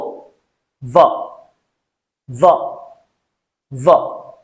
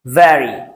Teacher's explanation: উপরের দাঁত নিচের টুটে, ঠিক ফ সাউন্ডের মতো, ফ, v. So v, v, v, as in the word very.